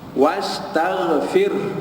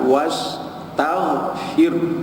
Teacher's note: tidak solid bunyi ra, dia ada pencampuran bunyi huruf ha